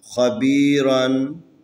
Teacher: یہاں پر خا حروف استعلا میں سے ہے، اس کو ہمیشہ موٹا کر کے پڑھنا ہے. تفخیم یہ را ہے، اگر را کے اوپر زبر ہو یا را کے اوپر پیش ہو یا را خود ساکن اس سے پہلے والا حرف کے اوپر زبر پیش ہو تو را کو تفخیم پڑھیں گے.